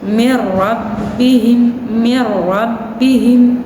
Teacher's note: nun sukun bertemu dengan huruf ro maka dibacanya tidak dengung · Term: idgham bila ghunah